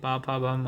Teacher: पा फा बा मा बोले तो हमारी ओंठ जो है वो स्पर्श करती हैं